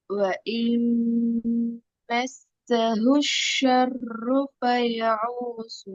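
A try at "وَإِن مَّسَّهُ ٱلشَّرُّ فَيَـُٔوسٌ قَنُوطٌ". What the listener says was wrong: ஹவுஸ்ன்னு ஆயினுக்கு போகுது.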